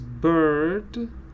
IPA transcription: ɜː(r)